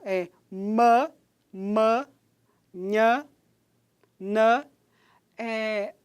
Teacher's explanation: o véu palatino vai funcionar aí como um articulador ativo, porque ele vai ficar abaixado para fazer uma obstrução na cavidade oral e o som passar livremente pela cavidade nasal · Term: som nasal